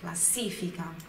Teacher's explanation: olha também a sílaba tônica, a sílaba forte aqui é no si.